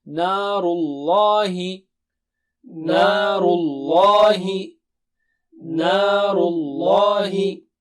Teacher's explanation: Lam should be thick of the word Allah.